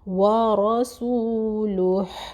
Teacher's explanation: را موٹا ہوگا کیونکہ اس کے اوپر زبر ہے، فتحہ ہے